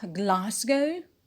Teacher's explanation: glasgow is a british city and the stress is on gla